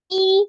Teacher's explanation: Ditekan mi, kemudian ditahan, berarti agak dua harokat